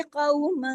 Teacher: کو واو لین ہے اس کو کو نہیں پڑھیں گے